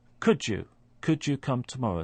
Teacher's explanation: we have a d sound at the end of could and a y sound at the beginning of you. What happens is that those 2 sounds merge together and create a third sound, which is could you come tomorrow. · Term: coalescent assimilation